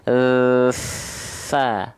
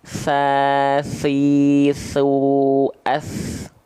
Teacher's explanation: Kalau sa kayak zal tapi bocorin pakai nafas.